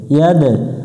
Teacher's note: ইয়া দাল জবর ইয়াদ, দাল অক্ষরের উপরে সুকুন থাকলে একটু প্রতিধ্বনি সৃষ্টি করতে হবে, যেটাকে কলকলা বলা হয়, কলকলা করতে হবে।